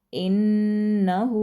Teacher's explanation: हा के ऊपर उल्टी पेश होने की वजह से हु को भी लंबा करेंगे